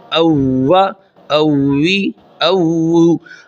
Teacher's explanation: حمزہ زبر واو، او، واو زبر وا، او، یعنی اس حمزہ زبر واو کو واو لین کی طرح او نہیں کرنا اور ہونٹوں کو سختی کے ساتھ ملانا ہے تاکہ واو مشدد ادا ہو. او، واو زبر وا، او، اوی، او.